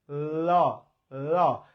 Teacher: যখন আমরা ল উচ্চারণ করি ল ল, তখন দেখেন ল উচ্চারণ করার সময় জিহ্বা উপরে তালুর সাথে লাগে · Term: পার্শ্বিক ধ্বনি